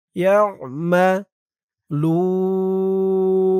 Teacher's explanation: আইনের উচ্চারণটা গলার ভিতর থেকে শক্ত হয়ে বের হবে